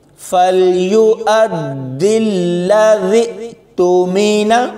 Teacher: ذال کو حمزہ کے ساتھ ملائیں گے تو یہاں پر بھرپور جھٹکا دے کر پڑھیں گے